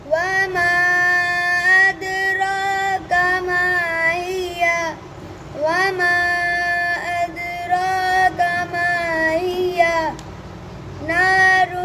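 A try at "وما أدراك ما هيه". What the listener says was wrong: मद पूरी नहीं की।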